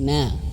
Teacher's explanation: Nun ketika berharakat fathah na Jangan sampai masuk hidung